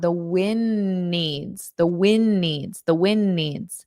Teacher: So I'm not pronouncing that d. So because I have an n here and a n here.